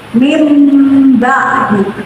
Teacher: Di situ ada sukun bertemu huruf ba disebut bacaan ikram, artinya mengganti nun sukun. Jadi nun sukun dibaca mim mati